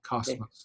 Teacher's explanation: Yes, it's just a straight S. It's not a buzzy S.